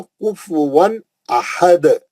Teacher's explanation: تنوین کا اظہار حلقی حرف حمزہ اور دال کا خلخلے کبرا